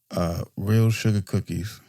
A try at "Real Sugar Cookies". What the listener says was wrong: There's no R on sugar.